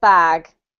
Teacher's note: you can elongate that vowel sound a little bit